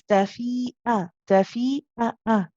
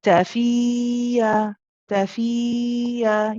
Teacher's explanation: Now you notice again the hamza, remember the sharpness, tafi'a, tafi'a. It's nice and sharp at the end. Not, if it was smooth, it would sound like this, which would be wrong. · It's kind of like you stop your voice at the end and start it again just to get that sharpness.